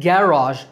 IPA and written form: ˈɡæ.rɑːʒ (garage)